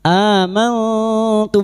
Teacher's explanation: Billadzi amantum, hamzah yang berharokat alif kecil di atas, mad badal, 2 harokat kita panjangkan. Amantum, nun sukun bertemu ta ikfa hakiki, kita samarkan bunyi nun sukun dan mendengung selama 3 harokat